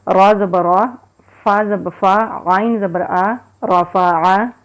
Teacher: زبر فا عین زبر آ رفعا را کو موٹا پڑھیں گے، عین کو حلق سے نکالیں گے، یہ حروف حلقی ہے۔